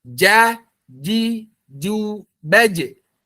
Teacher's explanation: Jadi tengah lidah betul-betul sejajar bertemu dengan langit. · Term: huruf jim